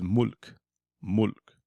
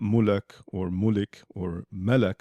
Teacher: the thing to notice here is that the lam is very short, mulk. It's not mulak or mulik or melek for contrast. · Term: sukoon